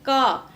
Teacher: उच्चारण स्थान कंठ है कभी आप बोलिए और देखिए क तो क में जो गला हमारा है गले के पास वहां जीवा का पश्च भाग जाकर टच होता है इसलिए उसका उच्चारण स्थान कंठ मान लिया गया जैसे यह है